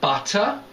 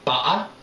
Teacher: in the local Essex pronunciation butter with the glottal stop